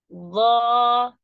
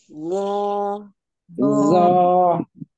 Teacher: Perhatikan pengucapan huruf lo itu lebih tebal karena pangkal lidahnya ikut terangkat. Loh, hati-hati jangan sampai melibatkan bibir.